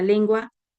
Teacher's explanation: la palabra lengua, la N viene a ser velar, es decir, se pronuncia de acuerdo al lugar que ocupe en la sílaba.